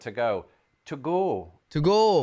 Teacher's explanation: she's pronouncing O's like ooh